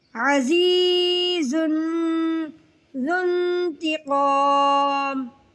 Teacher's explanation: زا کو سختی اور سیٹی کے ساتھ ادائیگی کرنی ہے، زال کو باریک اور نرمی کے ساتھ